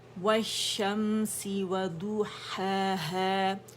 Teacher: ضو موٹا ادا نہیں کریں گے، ضو ضو و باریک ہوگا